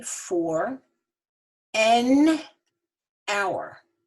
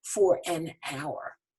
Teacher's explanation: Because the H in hour is silent, you don't hear it. You really hear the O-U-R. This is a vowel sound. We have to have A-N, for an hour.